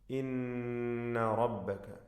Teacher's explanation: നൂൻ മുശദ്ദദ ശബ്ദ നൽകപ്പെട്ട നൂനിനെ മണിക്കണം